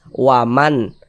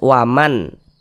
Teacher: Bunyi n-nya tuh jelas, waman. Tidak disamar-samarkan bunyi nun sukunnya, tapi jelas, waman. Kemudian dibaca pendek.